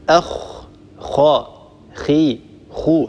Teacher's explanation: فحينما نقول خاء مثلا هكذا ننطقها أخ خاء خي خو هكذا هي حرف مفخم، حرف مستعل. الخاء حرف منفتح لأن الصوت لا ينحصر عند النطق بها بين اللسان وبين الحنك الأعلى، لأنها ليست من حروف الإطباق الأربعة الصاد والضاد والطاء والظاء. · يعود الصوت وينتشر في الفم وله صدى وله رنين، هذا ينتج سمن وفخامة في هذا الحرف، هذه هي صفة التفخيم وهي مستحق صفة الاستعلاء.